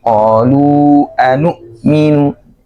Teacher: pangkal tenggorokan tempat keluarnya hamzah dan ha